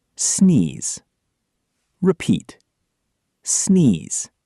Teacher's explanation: Vibrate vocal cords. Make sure your vocal cords are vibrating to make a buzzing zz sound, not a hissing s sound. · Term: the Z sound